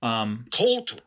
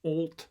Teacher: So the O doesn't kind of go into the normal diphthong mode that it usually does before that L. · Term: dark L